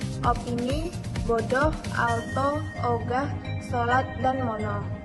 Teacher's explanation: Fonem o, vokal sedang belakang bulat